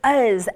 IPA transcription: əz